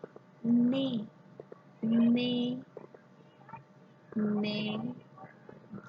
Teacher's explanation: Watch my tongue, it touches the pre-palate above, upside.